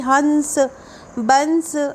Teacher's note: अनुस्वार के उच्चारण में हवा केवल नाक से निकलती है।